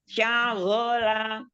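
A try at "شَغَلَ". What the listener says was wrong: Lagi kurangi sya-nya. Syagola.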